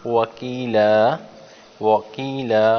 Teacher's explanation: واو کو گول انداز میں ادا کیے ہیں